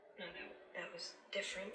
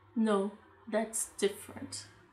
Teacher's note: Tá vendo que ela põe a entonação no different?